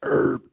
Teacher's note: Americans kept the original French influence pronunciation. American English herb, E-R-B, silent H is standard.